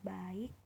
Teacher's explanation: Di akhir kata ka pada kata baik diucapkan lebih tertutup, sedangkan terdengar seperti hentakan singkat. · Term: alofon